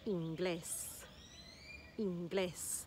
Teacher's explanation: the emphasis is on the last syllable because that's where the e is